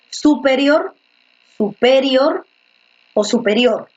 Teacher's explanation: en rior es donde recae la mayor fuerza de voz